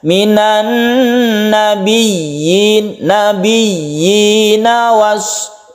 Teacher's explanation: kita tasydidkan dulu ya-nya, kemudian kita panjangkan ya-nya 1 alif sebagai ya, harus jelas ya-nya. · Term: mad tamkin